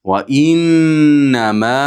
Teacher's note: Va innama 4 va 5 harakat miqdorida cho'zamiz.